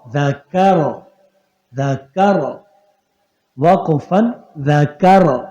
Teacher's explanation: کاف باریک رہے گا را موٹا ہوگا